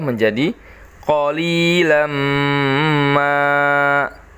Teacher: Jadi suara tanwinnya masuk ke dalam huruf mim tersebut dan dengung. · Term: idgham bigunnah